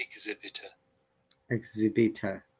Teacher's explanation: there is no R sound because it is at the end of the word